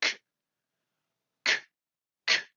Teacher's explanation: correspondent en français à une consonne vélaire sourde